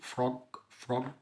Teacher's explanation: الاف فويسلس يعني ما بيطلعش صوت او ما بيحصلش اهتزاز في الاحبال الصوتيه. لو حطيت ايدك على زرك مش هتحس بحاجه.